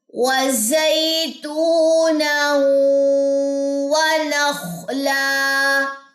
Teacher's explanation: وَزَي یائلین، تو واو مدہ، نون واو زبر، یہ دونوں زبریں جو ہے واو سے ملیں گی. ادغام مع الغنہ، غننے کے وقت آپ کے ہونٹ گول ہونے چاہیے